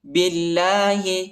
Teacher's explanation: اللہ کے نام کو پر نہیں پڑھنا، ٹھیک ہے، اس کو باریک پڑھنا ہے